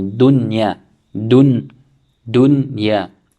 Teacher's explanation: So they are saying you should rather make izhar of the mim, of the noon sakina, read the noon sakina clearly. You would not make idgham, you will not make any nasal sound, but rather read it clearly.